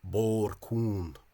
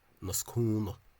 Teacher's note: Cún in the Caighdeán Oifigiúil misspelling CUNG, but as I said, unstressed, or basically NG after an unstressed vowel has become an N. So a narrow road in Loud Irish, bor cún, and not cún, as you might expect from the Caighdeán Oifigiúil misspelling.